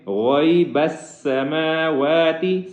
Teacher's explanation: غیب السماوات والارض، غیب السماوات والارض یہاں پہ غین کو موٹا کریں گے، آگے غیب السماوات سین کے اوپر تشدید ہے، اس پہ سٹی کی آواز نکالیں گے، اس کو موٹا بھی نہیں کرنا